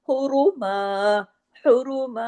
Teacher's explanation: रा हैवी किया आपके अपने पेश की वजह से, और अगर हम यहाँ रुकते हैं तो मीम अलिफ जबर मा, एक जबर और एक अलिफ पढ़ा जाएगा, मीम दो जबर मन नहीं पढ़ा जाएगा।